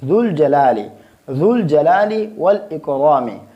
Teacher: ذو الجلال والاکرام، ذو الجلال والاکرام، اس میں جو ذال ہے اس کو ہم نرم پڑھیں گے اور اس پیش میں ہونٹوں کو گول کریں گے